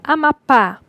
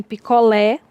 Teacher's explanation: Na palavra Amapá, o acento virá na última sílaba. Em picolé, também.